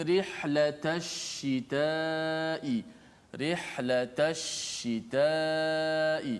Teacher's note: Tafasyi martabat yang paling tinggi terjadi pada huruf shin yang musyaddadah.